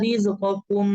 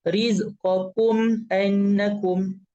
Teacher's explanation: Izhar adalah kita baca jelas. tanpa dengung. Jelas maksudnya kita baca izhar syafa. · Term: izhar syafawi